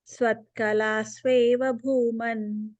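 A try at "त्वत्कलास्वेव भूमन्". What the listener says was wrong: Yeah, no is sound there. Just Twat Kalas.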